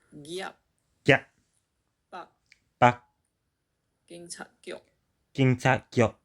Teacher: Hokkien also preserves the M, P, T, and K final consonants, which are lost in Mandarin.